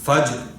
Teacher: اور را پہ کلکلہ نہیں ہوگا, یعنی را پہ آواز ٹکرائے گی نہیں